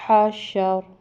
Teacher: را پہ زبر ہے تو موٹا پڑھیں گے